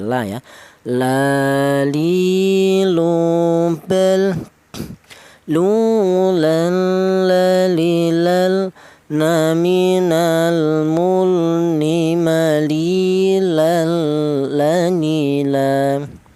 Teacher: Untuk huruf lam keluarnya huruf berasal dari ujung lidah menyentuh langit-langit mulut